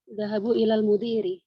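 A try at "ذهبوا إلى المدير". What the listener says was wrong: Dhahabu ilal mudiri, ahsant.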